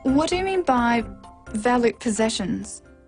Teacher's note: this is a work question, so it needs a falling tone.